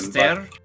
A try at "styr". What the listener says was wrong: But I don't think with that little trill.